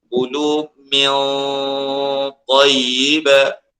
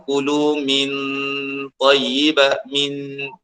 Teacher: Nun mati disembunyikan pada ta secara keseluruhannya. Bunyi ta terus dengan makhraj, dengan sifat ta, isti'la, itbaq, min tid itu sepenuh. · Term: ikhfa hakiki